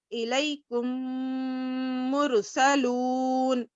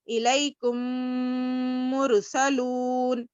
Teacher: میم کو میم سے ملا رہے ہیں، غنہ بھی کر رہے ہیں ناک میں. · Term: ادغام شفوی